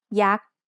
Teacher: Yak is high tone because it has a low class consonant and a dead syllable with a short vowel